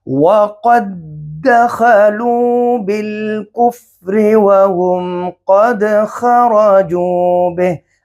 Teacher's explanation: تو پہلے ساکن حرف کو دوسرے میں ہمیں ملائیں گے، یعنی پہلا جو دال ہے یہ اس کے اندر، دال کے اندر مدغم ہو گیا، تو صرف اس دال کو پڑھنا ہے، پہلا دال نہیں پڑھیں گے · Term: ادغام مثلین